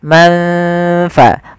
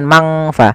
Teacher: Maka samarkan ke huruf fa, manfa, bukan mangfa. Tidak semua bacaan ikhfa dibaca dengan eng, tapi dia disesuaikan dengan hurufnya dan sifatnya.